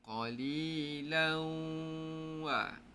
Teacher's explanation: dengung bunyi wau. Dengung bunyi huruf wau. Ha itulah cara dengung idgham al-hunah.